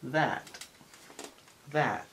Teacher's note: Pues es entre A y E.